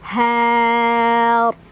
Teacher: Karena huruf sebelumnya adalah fathah, maka ro-nya tebal.